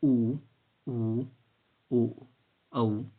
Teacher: उच्चारण में जीभ पीछे की ओर जाती है। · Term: पश्चय स्वर